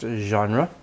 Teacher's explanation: In English, it is pronounced genre. Stress on the first part, genre. Second syllable is a weak syllable. It's very light